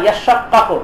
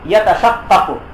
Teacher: আসলের মধ্যে যে তা ছিল সেই তাটাকে ইদগাম করা হয়েছে ফি শিন, শিনের মধ্যে